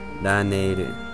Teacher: It's the ne that's extended, so the ne in Laneru is probably the one accented.